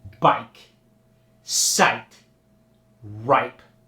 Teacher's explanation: When the long I is followed by a voiceless consonant like pike, it doesn't change at all. It just gets that hard long I for example bike sight ripe.